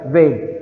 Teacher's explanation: The lower lip touches the upper teeth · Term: voiced labiodental fricative